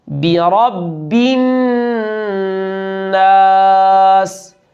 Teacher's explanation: با کی زیر کو معروف پڑھنا ہے، بے نہیں ، رب الناس بھی نہیں، با کی زیر کو یہاں بھی